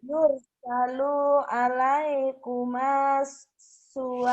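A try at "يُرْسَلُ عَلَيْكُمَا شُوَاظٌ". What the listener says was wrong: Suwazun. Ya, di sininya nggak ada yang panjang nih. Yursalu alaikuma syuwazun. Ayo.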